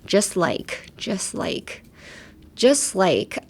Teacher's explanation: I would say the T in just is silent